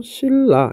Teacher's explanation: 자, 뭐가 바뀌었냐 하면 여기 있는 니은이 여기 있는 리을로 바뀌게 되죠. 자, 유음이 아닌 니은이 어떻게 유음인 리을로 바뀌게 됩니다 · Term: 유음화